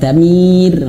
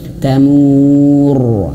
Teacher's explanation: ditahanumah baru gitu ya itu Isah huruf tamur rnya tebal yaah Kenapa rnya tebal karena huruf rnya mati sukun sebelumnya ada huruf yang berharakat dammah